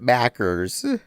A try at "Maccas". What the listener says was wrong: It's not ERS at the end. It's AHS. Maccas. Maccas. Maccas.